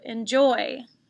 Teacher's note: the second syllable is accented on this word enjoy